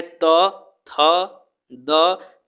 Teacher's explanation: दंत से बोले जाते हैं त, थ, द